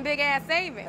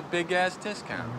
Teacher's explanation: they use consonant-consonant linking to make it sound like big ass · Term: consonant to consonant linking